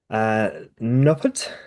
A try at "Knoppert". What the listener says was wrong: No, it's not a silent K, it's a hard K. Knoppert, but not Knoppert.